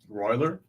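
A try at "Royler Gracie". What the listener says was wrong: Yeah, but they pronounce it's Portuguese, so they pronounce the R's with an H, so it's Hoyler. Hoyler Gracie, Hoist Gracie.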